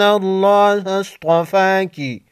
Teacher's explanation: صاد اور طا کو موٹا پڑھیں گے